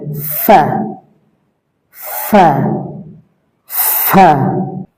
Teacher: নিচের ঠোঁটের পেট সামনের উপরে দুই দাঁতের আগার সঙ্গে লাগিয়ে এরকম উচ্চারিত হবে এবং এটা একালি প্রাণ হবে ফা ফা ফা।